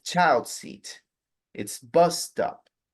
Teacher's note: you are going to stress more strongly the first noun than the second noun